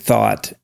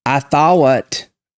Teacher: There is a very strong diphthong for things like bought, I'm saying it in my accent, and thought.